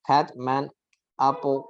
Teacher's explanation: the sound is made with a mouth spread wide open.